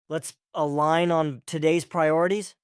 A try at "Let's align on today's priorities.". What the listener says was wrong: Now say it again a little smoother. Feel how we link let's align as one thought. Don't pause between them.